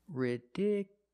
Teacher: the stress moved to the second syllable ridiculous so the last two syllables are short it's not you it's ridicu you still have the Y sound